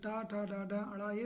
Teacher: ट ठ ड ड पाच अक्षर और र और स इनका उच्चारण स्थान क्या है मूर्धा है